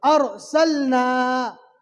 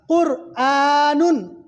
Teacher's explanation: پھر اس کے بعد قرآنن، یہاں پر بھی آپ دیکھ لیجئے جزم والے را سے پہلے کیا ہے؟ پیش ہے، تو یہاں پر جزم والے را کو پور پڑھیں گے